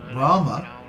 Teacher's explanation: Rama has a long a Ma has a short a so Ram is pronounced three Paras two on the first syllable